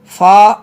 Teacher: ऊपर के दांतों के किनारे और निचले होंठ के तर हिस्से से अदा होता है